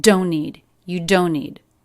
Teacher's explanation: T completely dropped. The N in don't links directly into the N in need.